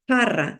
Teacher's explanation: se va hacia atrás a la parte velar que está un poquito más suave